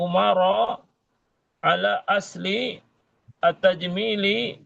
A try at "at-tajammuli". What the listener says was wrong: At-tajammuli. Kalau tajamili setelah mim ada ya-nya. Ya sukun.